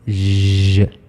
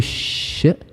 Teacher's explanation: it's because ج is the voiced sound و ش is the voiceless sound